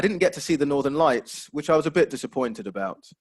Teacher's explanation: that falling intonation just to show the fact that there's a bit of disappointment there